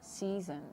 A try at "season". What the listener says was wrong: Good. That was really good.